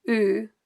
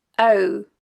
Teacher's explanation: the speaker is using the Scots word new meaning no well in Scots this word is pronounced using a single vowel sound o in Scottish Standard English this is a dip thong ow